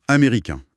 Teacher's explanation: On s'arrête sur une voyelle nasale. L'air passe par le nez et le N à la fin n'est jamais prononcé. Il n'existe pas auditivement parlant.